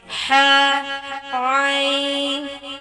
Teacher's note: ہاں، اب دیکھیں ہا، عین، یہ کہاں سے ادا ہوتے ہیں؟ یہ حروف حلق کے درمیانی حصے سے ادا ہوتے ہیں